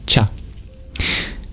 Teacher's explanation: we arch up the tongue to the pallet to make that sound cha when we breathe out making that same place of articulation then